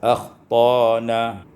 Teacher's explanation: dibaca dengan ibdalul hamzati alifan, ditukar hamzah dengan alif